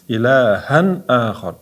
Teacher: Tanvindan keyin hamza ya'ni alif keldi. Nunni bildirib o'qiymiz. Ilahan ahor izhor qoidasi bu yerda.